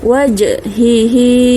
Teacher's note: Huruf jim baris sukun, ini adalah bacaan qalqalah. Huruf jim adalah huruf qalqalah, kita baca dengan lantunan.